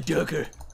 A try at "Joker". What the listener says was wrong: Did not sound like Joker. That sounded like Doker. I'm pretty sure you threw a D in there for no reason.